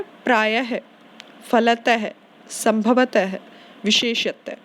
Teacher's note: उच्चारण करते समय इसमें आवाज आती है ह की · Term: विसर्ग